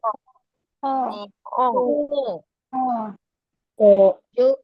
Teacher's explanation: जो जोान का बिल्कुल लास्ट हिस्सा है वहां से हलक ख निकालिए। · حلق کے ابتدائی یعنی شروعاتی حصے سے خو ادا ہوتا ہے. ہمیں خواہ نہیں کہنا، خو کہنا.